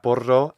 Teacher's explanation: I think I hear a long final O here